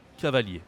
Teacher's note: And we don't say the R at the end. Like I-E-R in French, we say ye and not hier.